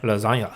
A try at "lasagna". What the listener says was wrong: Why is there an Enya in there? That's from the G, You said lasagna. Lasagna.